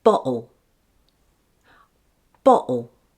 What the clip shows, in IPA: bɒʔl